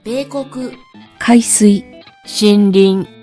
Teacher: The first one, heiban, which starts low and remains high, and the particle also attaches high.